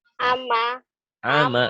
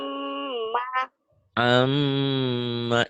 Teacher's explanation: Cara bacanya tiga, dibaca double, dengung ke hidung gunnah, dan ada madnya, ada panjangnya.